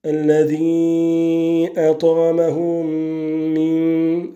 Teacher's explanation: l'assimilation du mime de at'amahum avec le mime juste après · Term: al-idram al-shafawi